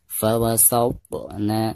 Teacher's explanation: Di sini di tengah-tengah bacaan, maka dihukumi qalqalah sugro ya. Dibacanya harus dipantulkan dengan suara pantulan yang tipis ya.